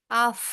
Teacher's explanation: ये ऐसी साउंड आ रही है जैसे हवा बाहर की तरफ निकल रही है मुंह में से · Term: साकिन फा